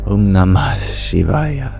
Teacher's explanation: Something very few languages have, but it's a very beautiful part of Sanskrit, where we force the remaining breath out of us. What that sounds like in the Om Namah Shivaya is kind of an exhale into the start of the sh of the Shivaya. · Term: Visarga